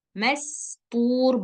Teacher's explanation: Bukan mas, tapi mastur, bersih dia suara sinnya, nggak berpasir-pasir.